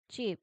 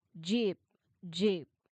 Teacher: So, cheap is the voiceless or unvoiced one. Jeep is the voiced one.